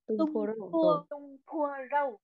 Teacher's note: nhớ âm P bật hơi nhá mọi người, bật hơi nhá.